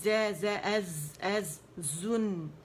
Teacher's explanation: زن, اس میں buzzing sound ہے